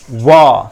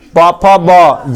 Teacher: व को बोलने के लिए हमें दांत और होठ दोनों का प्रयोग करना पड़ता है। दंत और ओष्ठ दोनों का प्रयोग करना पड़ता है।